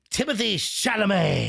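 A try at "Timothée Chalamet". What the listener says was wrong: Yeah, I think you had your consonants reversed.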